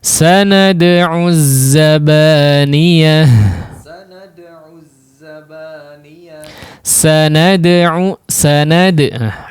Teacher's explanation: Huruf dalnya diperhatikan ya, qalqalah huruf dalnya diperhatikan.